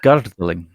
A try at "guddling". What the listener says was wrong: Guddling. There's no R in it. Guddling.